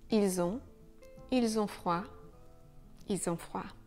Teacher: avec il au pluriel, on enlève le L, mais on garde le S.